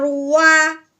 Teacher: وا ایسے کہ گولائی سے نکالنا ہے